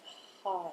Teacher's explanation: It's a breathy sound. You don't engage the vocal cords at that point. You just let the breath sound come out. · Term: tantric breath of ha